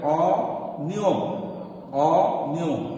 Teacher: ঠিক অটা অর মতোই হচ্ছে, অটা ওর মতো হচ্ছে না।